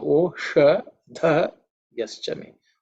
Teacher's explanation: dha again, which is fourth letter in the tha varga, so it is aspirated.